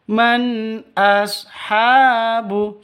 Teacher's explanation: nun mati bertemu dengan Hamzah jelas terang zhar halq tidak boleh didengungkan